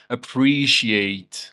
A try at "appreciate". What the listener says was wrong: Yeah, you have to separate those two syllables by adding extra sound, not eliminating it.